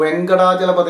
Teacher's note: വക് എന്ന് പറഞ്ഞു കഴിയുമ്പോഴത്തേക്ക് അത് ഒരു മാത്രം കുറെ കൂടുതലായി അതുകൊണ്ട് അത് ഗുരുവാണ് അതേസമയം വക് പറഞ്ഞു കഴിഞ്ഞാൽ പിന്നെ ക എന്നേ അടുത്ത അക്ഷരം ഉള്ളൂ ആ